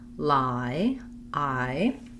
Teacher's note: lie we have the i diphthong where it's not rounded and i'm open and back it's in the start and then i glide to a more relaxed closed vowel so lie i you might think about that as y e